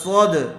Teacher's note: الم نشرح لک، لام زبر لا، کاف زبر کا، لکا، کاف کے اوپر زبر ہے اس لیے اس کو جلدی پڑھیں گے، کھینچیں گے نہیں۔ صاد، صاد کو پر کیجیے، دال کے اوپر جزم ہے اس لیے صاد کو دال سے ملا کر پڑھیں گے۔ الم نشرح لک صد، را زبر را، صد را، کاف زبر کا، صد را کا۔